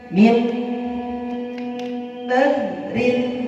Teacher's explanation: harus dengungnya yang lama